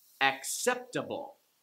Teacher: sound here are some examples acceptable like the four syllable words it's the third from the last syllable that gets the stress